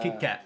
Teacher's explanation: We don't even say the T's at the end. We just say Kit Kat.